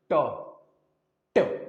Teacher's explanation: देखिए आप बोलेंगे ना तो आपका जीभ जो है उल्टा हो जाएगा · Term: मूर्धन्य